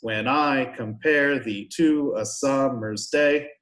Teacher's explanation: it goes unstressed stressed five times a line